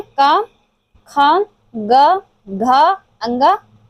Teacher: का वर्ग जो कंठ से उच्चारित होता है